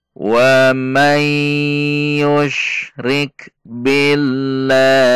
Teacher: lafaz jalalah didahului kasrah berarti dibaca tipis